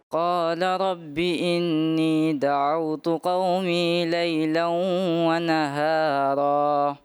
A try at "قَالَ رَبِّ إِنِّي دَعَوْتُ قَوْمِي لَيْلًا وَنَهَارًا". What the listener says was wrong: اچھا، قال رب انی دعوت، انی دعوت، نون مشدد کا گنہ اور یا مدہ دونوں گئی. پھر اس کے بعد جو ہے نا دعوت قوم لیلا قوم لیلا، یہ ادا کی طرف توجہ کم ہے.